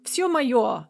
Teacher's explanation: Trochees also have 2 syllables per foot, but in their case, you start with a stressed syllable and followed by an unstressed syllable. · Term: trochaic line